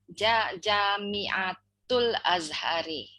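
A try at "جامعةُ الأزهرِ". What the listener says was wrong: Jami'atul Azhari, very good.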